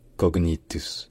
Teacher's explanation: Vraiment le G et le N qui sont prononcés vraiment à part.